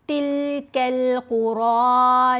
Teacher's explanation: یہاں را کے اوپر کھڑا زبر ہے, را کو پر پڑھیں گے, موٹا پڑھیں گے اور 2 حرکات کی مقدار لمبا کریں گے.